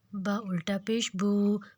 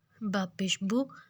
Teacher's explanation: الٹا پیش کو بھی مطلب کھڑی پیش کو بھی ہم نے 2 حرکت ہی لمبا کرنا ہے، اور سمپل پیش کو ذرا بھی لمبا نہیں کرنا